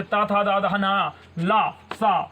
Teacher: दंतब होते हैं, दंत से बोलने वाले।